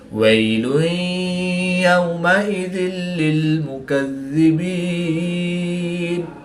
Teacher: 2 پیش کی تنوین کے بعد یا حروف الملون میں سے ہے تو یہاں پر ادغام مع الغنہ ہوگا، یعنی غنہ کر کے پڑھیں گے۔ واو ساکن سے پہلے زبر ہے تو واو لین ہوگا، اس کو لمبا نہیں کریں گے۔ 2 زیر کی تنوین کے بعد لام حروف الملون میں سے ہے تو یہاں پر ادغام بلا غنہ ہوگا، ان کے بغیر غنہ کے ادغام کر کے پڑھیں گے۔